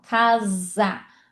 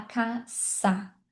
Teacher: casa em português é como se fosse um Z, ó, casa. Mas em espanhol a gente fala caça. É uma coisa mais suave.